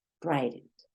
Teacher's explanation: la t en medio de dos vocales tiende a convertirse en una r